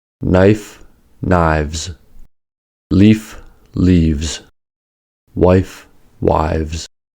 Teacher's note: From singular to plural. Voicing was also used to make the plural noun forms